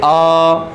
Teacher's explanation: विव्रत का मतलब होता है मुंह पूरी तरह खुलता है, यानी ओपन